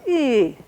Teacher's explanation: it's a falling it starts high and goes low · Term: falling pitch